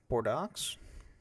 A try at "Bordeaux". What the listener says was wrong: It's French. I don't think you pronounce the X.